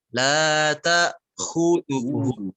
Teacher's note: pada kata khudhuhu, hu-nya yang dipanjangkan